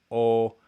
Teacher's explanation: in the back high mid rounded you have o